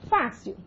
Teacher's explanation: Sílaba prosódica da palavra, a penúltima. Você tem paroxítona terminada por L, olha lá, é acentuada graficamente.